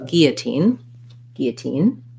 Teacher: we don't um say the l sound so we say first the g sound and an e sound and then this o becomes more of an uh and our · then this o becomes more of an uh and our and then we have another tense e at the end uh first syllable stress